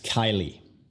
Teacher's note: La primera sílaba, K-Y, es la enfatizada. Kai. Luego L-I-E se pronuncia igual que L-I, igual que L-E-Y, como Miley Cyrus.